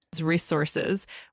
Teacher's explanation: of course, it's pronounced as resources with the emphasis on the second syllable sor